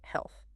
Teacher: It ends softly with your tongue between your teeth